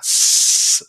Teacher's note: 스 소리가 날 때 여러분들 윗니하고 아랫니 사이에 이 틈으로 공기를 내보낸다는 뜻이에요. 그러니까 상대적으로 파열보다 공기가 지나가는 통로가 좁다는 얘기죠. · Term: 시옷